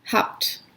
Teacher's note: at the end of the word it actually is pronounced as a P it's pronounced unvoiced